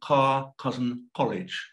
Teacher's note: cousin college in mle you're likely to hear car cousin college with a quite a different k sound technically we call this a uvula plosive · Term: k backing